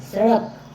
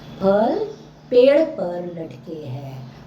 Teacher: इनके उच्चारण में जीभ का अग्रभाग ऊपर उठाकर मूर्धा को स्पर्श कर झटके से वापस आता है